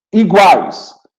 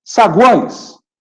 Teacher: iguais é um tritongo oral. Saguões é um tritongo nasal.